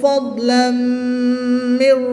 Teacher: دو زبر کی تنوین کے بعد میم حروف یرملون میں سے ہے تو یہاں پر ادغام مع الغنہ ہوگا، غنہ کر کے ادغام کریں گے